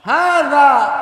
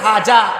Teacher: জিহ্বার আগাকে দাঁতের আগায় লাগায় বলতে হয়